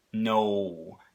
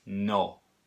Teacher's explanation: and your tongue is gonna be a little bit higher no you're actually changing that vowel as you go through it no right in Spanish it's not that way it's just no · your lips are gonna be closer together and your tongue is gonna be a little bit higher no you're actually changing that vowel as you go through it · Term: diphthong